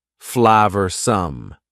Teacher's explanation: Notice the pronunciation. 2 schwa sounds there.